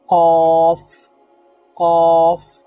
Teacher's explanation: জিহ্বার যে গোড়ালি আছে সেই গোড়ালিটাকে যদি আমরা উপরের নরম জায়গাতে লাগাই তাহলে সেখান থেকে উচ্চারিত হবে কি কফ কফ